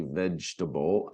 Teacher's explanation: We don't say all the letters there, obviously, vegetable. Actually, we sort of skip that second E, don't we? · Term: silent syllables